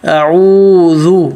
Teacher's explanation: اعوذ، حمزہ پتلا، عین پہ ہونٹ گول، عین حلق سے